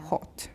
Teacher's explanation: And the British aw usually has a slight lip rounding.